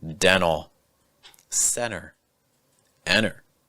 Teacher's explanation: There are times when a T is going to disappear completely. This is the silent T, and it usually comes when you have an N plus a T combination. Again, dental, center, enter.